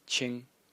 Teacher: the first character in the series is pronounced Ching in the first tone and it means clear clear or clean and uh the semantic · the second character in the series is pronounced Ching in the second tone